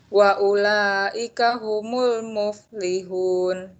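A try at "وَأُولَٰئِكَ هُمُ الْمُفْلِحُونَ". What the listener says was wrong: Bisa dipanjangkan sedikit. Wa ulaika itu panjangnya harus 5. Ulangi.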